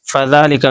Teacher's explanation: ذال کے اوپر کھڑا زبر ہے، کھڑا زبر الف مدہ کے برابر ہوتا ہے، اس لیے اس کو کھینچیں گے